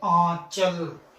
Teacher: जो हवा होती है, मुख और नाक दोनों के साथ बाहर निकलती है, उसे अनुनासिक